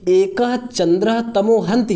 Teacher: विसर्ग है उसका दंत सकार आधा दंत सकार हो गया स्वर रहित दंत सकार हो गया